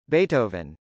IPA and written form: bˈeɪtəvən (beethoven)